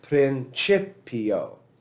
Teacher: you'll hear me put the accent over the second syllable